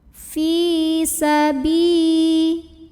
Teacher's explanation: fa yang kasrah kita panjangkan sepanjang 2 harokat saja. Fi sabi. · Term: magtobi'i